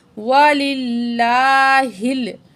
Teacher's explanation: درمیان والے لام سے پچھلے الفاظ کے نیچے زیر ہے، یہاں ہم نے لفظ اللہ کو باریک پڑھنا ہے